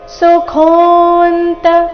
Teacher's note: ಸುಖೋಂತ ಕೋ ಮಹಾಪ್ರಾಣ ದೀರ್ಘ